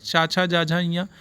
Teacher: जो च वर्ग है वो तालू से होता है